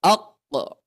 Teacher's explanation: kalau huruf qaf itu menempel ke langit-langit atas yang lunak gitu